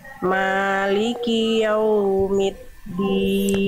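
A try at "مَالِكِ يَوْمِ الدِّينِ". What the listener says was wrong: Jangan middin, jangan huruf ta, tapi huruf dal. Jangan middin, tapi middin.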